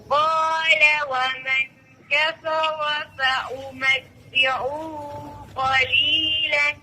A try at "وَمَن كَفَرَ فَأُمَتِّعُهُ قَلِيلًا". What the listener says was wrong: और आपने वमन काफरा पे गुन्ना छोड़ दिया है, قال ومن كفر فأمتعه قليلا